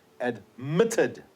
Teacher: The accent is on the second syllable.